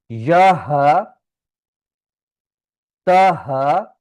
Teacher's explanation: हा जो है ये सीने से पढ़ा जाएगा